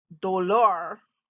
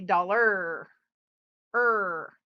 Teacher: that's the sound we make for r we never roll it and it's always a hard sound like er